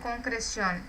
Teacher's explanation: É uma palavra que a gente chama de aguda, tem a última sílaba tônica